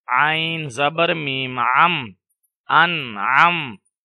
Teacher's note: نون ساکن کے بعد حروف حلقی میں سے عین آ رہا ہے تو یہاں پر غنہ نہیں ہوگا